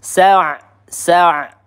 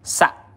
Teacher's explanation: Nah, di sini ain sukun ya, dia punya sifat tawas. Kita alirkan sedikit suaranya sa ya, bukan sa hati-hati tertukar dengan huruf hamzah.